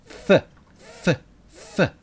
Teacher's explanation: We make the f sound with our bottom lip and upper teeth. Fa, a fa. It's voiceless, like a whisper.